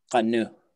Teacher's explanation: there's a K on the end of that verb that falls off for some reason.